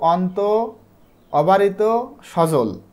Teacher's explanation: জিভ নিচু আছে এবং এটা মাঝখানের দিকে থাকে এবং ঠোঁট প্রসারিত হয় এবং ঠোঁটটা বেশি খোলে